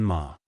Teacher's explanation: First tone, high and level